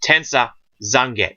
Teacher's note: Now, the Japanese, they omit the U in some words. Generally when it's on the end.